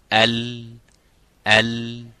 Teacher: the tip of the tongue into the roof of the mouth the air goes right and left